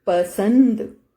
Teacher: स के साथ न की आवाज आ रही है, तो स के ऊपर बिंदु आएगा, पसंद, क्योंकि यहां पर सिर्फ सिंपल साउंड आया है।